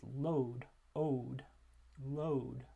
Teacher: we're going to be focusing on the beginning of that diphthong being a mid-back vowel.